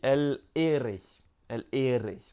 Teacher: il faut faire rouler la langue au niveau du palais. Juste ici. Je ne sais pas si on peut voir. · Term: R roulé